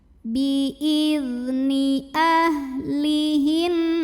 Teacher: Hati-hati ya, zal itu nggak boleh mantul, nggak boleh juga ngalir anginnya. Yang ngalir itu hanya suaranya, rokhawah.